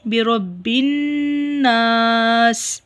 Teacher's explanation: نون مشدد ہے، نون کے اوپر غنہ کریں گے